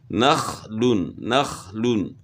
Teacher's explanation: خا کو بھی ہلا کر نہیں پڑھیں گے، خا میں قلقلہ نہیں ہوگا کیونکہ حروف قلقلہ میں سے نہیں ہے